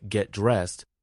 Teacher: the t in get blends with dressed, so it sounds like dressed.